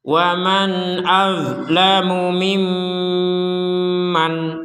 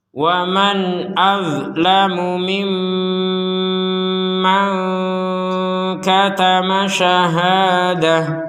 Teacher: Kalau digabung barulah di sini ada pertemuan nun sukun dengan kaf menghasilkan suara yang samar